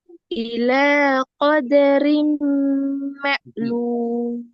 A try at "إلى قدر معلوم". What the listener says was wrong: ரீன்னு தான் வருது. இன்னும் நல்லா முன்னுக்கு வரணும், தொழில முன்பகுதிக்கு வரணும். إلى قدر معلوم.